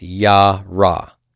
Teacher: Here the sere has been forced into a pathak due to this guttural in closing position. You will, on occasion, see the sere retained, but then a furtive pathak sneak in here.